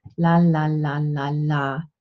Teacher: But in German, in Standard High German, you have a light L. So you simply have your tongue very straight and relaxed in your mouth. The tip of the tongue touches the alveolar ridge, and you go la la la la la.